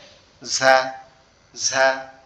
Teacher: আমাদের জিহ্বার আগা সামনের নিচের দাঁতের আগার সঙ্গে লাগবে, লেগে উচ্চারিত হবে ঝা ঝা। ঠিক আছে? এর পরের যে অক্ষর যেটা সেটা হচ্ছে সিন।